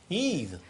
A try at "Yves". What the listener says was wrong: Non, Yves. Non, Yves, avec un F, comme dans flamand.